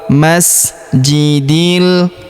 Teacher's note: huruf di langsung sambung masuk lompat ke huruf lam yang berharakat sukun. Langsung masuk ke sini alifnya tidak dibaca ya. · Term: Alif lam qamar